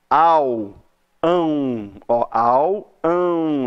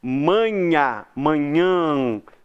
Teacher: Então o tio ele só marca que aquela vogal ali, ela tem que ser pronunciada com nasalização. Em vez de você liberar esse ar aí pela boca para falar a vogal, você vai liberar um pouquinho desse ar pelo nariz.